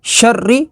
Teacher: را کے اوپر تشدید ہے تو تشدید والے حرف کو 2 دفعہ پڑھیں گے. را زیر ری، شر.